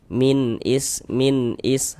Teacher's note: Jadi bunyi nun sukunnya itu kita baca jelas. Kemudian tidak didengungkan. Maka karena dia tidak didengungkan maka tidak tidak tahan. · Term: izhar halqi